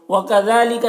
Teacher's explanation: ذال میں کھڑا زبر ہے، ایک الف کے برابر کھینچیں گے۔